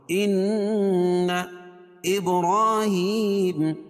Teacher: ان نون مشدد ہے، اس میں غنہ ہوگا · ان ابراہیم، با پر قلقلہ اور را کے اوپر کھڑا زبر ہے اور ہا کے نیچے کھڑی زیر ہے، دونوں کو ایک ایک الف کے برابر کھینچ کے پڑھیں گے